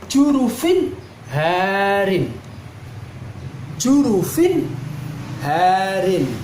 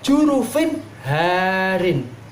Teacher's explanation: Tanwin kasroh bertemu dengan ha. Harus dibaca jelas karena disebut bacaan idhar.